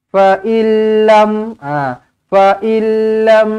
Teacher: فَإِنْ لَمْ يَسْتَجِيبُوا لَكَ فَاعْلَمْ أَنَّمَا يَتَّبِعُونَ أَهْوَاءَهُمْ Fa illam, ingat bila jumpa dengan lam sabdu tak payah dengung. Bila jumpa dengan lam sabdu tak payah dengung dah. Terus masuk sahaja. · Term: idgham bila gunnah